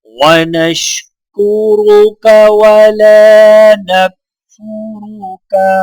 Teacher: یہاں پر دونوں را کے اوپر پیش ہے تو لہٰذا دونوں را کو موٹا پڑھا جائے گا، جبکہ لام کو الف کے ساتھ ملاتے ہوئے ایک الف کے برابر کھینچ کر پڑھا جائے گا